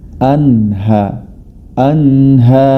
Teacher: tempat lahirnya huruf ha adalah pangkal tenggorokan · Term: huruf halqiyah